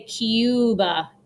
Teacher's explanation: In English, we say Cuba. We add like a Y sound in there, Cuba. In Spanish, you say Cuba.